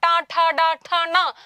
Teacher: മൂർധാവിലാണ് നമ്മുടെ നാവ് പോയിട്ടൊരു ഇടി കൊടുക്കുന്നത് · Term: മൂർധന്യം